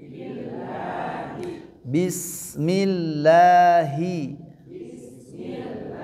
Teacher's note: Nah, itu lamnya dibaca tipis. Kenapa dibaca tipis? Karena sebelumnya kasrah ya.